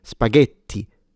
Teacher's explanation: Remember, if you do want to sound Italian, then the T needs to be fully pronounced and you need a stronger or more technically a longer sound because you have two T's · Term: full T sound